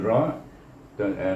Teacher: Jadi disitulah bergetarnya lidah tadi yang dikatakan takrir, takrir, iaitu bergetar ujung lidah semasa menyebut huruf ra